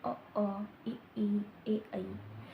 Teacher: आपका जो मुंह है वो गोलाकार नहीं होता, यानी कि आपके जो होंठ है ना वो गोल नहीं होते। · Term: अव्रतमुखी